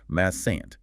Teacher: Mustant is irregular in common speech pronunciation. Massant dropping the t sound before the n though the t is written